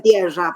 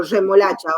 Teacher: hacen una vibrante doble pero palatal